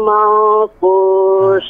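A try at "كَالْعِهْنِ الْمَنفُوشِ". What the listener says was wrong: Jangan ditahan, jangan. Kal ihnil manfus. Nanti kalau dijeda jadi sakta hukumnya. Ya, jadi langsung berlanjut. Kal ihnil manfus. Ya, kal ihni, tidak kal ihni, tapi kal ihni. Ya, nyatu ya.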